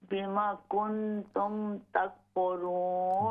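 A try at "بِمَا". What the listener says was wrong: बीमा अलिफ पूरा पढ़िए। बिमा कुन्तुम तकफुरून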